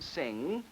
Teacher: the air comes out of the nose. So it is a velar nasal · For instance, let's take the last sound in the English word sing. It is actually a velar, that is, the back of the tongue goes against this velum, sing, and the air comes out of the nose.